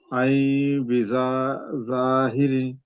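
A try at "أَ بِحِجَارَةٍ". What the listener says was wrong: ఐ కాదు, ఆ ఆ హంజా ఫథా ఆ ఆ చదవాలి. ఆ తర్వాత బాకి వెళ్ళిపోవాలి. మధ్యలో 2 హర్కాతులు దీర్ఘం. ఆ బిజాహిరిన్.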